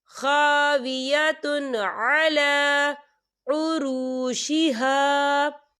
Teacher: قریۃ وہی خاویۃ علی، خاویۃ علی، یہ دیکھیے خاویۃ، تا کے پر تنوین ہے اور تنوین کے بعد جو ہے عین آ رہا ہے، اور عین جو ہے حروف ہلکی کا ورڈ ہے، تو ہم یہاں اظہار کریں گے اور ہم اسے بنا غنّے کے پڑھیں گے